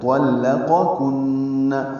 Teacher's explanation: نون مشدد پہ غنہ ہے